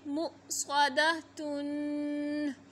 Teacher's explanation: ता तनवीन है, इख्फ़ा करेंगे और हमज़ा पे साकिन है तो झटके से पढ़ेंगे